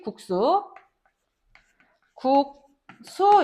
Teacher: 국수 역시 앞에 오게 되는 앞말의 종성받침이 기역이기 때문에 뒷말에 오게 되는 초성 시옷이 쌍시옷으로 발음되겠지. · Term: 된소리